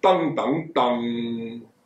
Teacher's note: 你嘅脷尖係唔會頂住上顎，得個脷尖都係冇頂住上顎嘅。個分別就在於噔噔噔咧，你啲氣係可以衝上個鼻，所以話鼻音啊